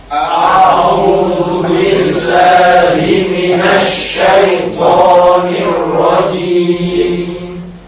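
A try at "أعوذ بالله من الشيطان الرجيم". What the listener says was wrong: Cuman masih terdengar juga agak miring, terutama pengucapan syai. Syai. Ya mati maka harus meringis. Syai bukan syai tapi syai. Waw dimatikan bertemu koma juga harus mencucu, mosok ke depan. Zu bukan hulu. A'udzu billahi minasy syaithanir rajim.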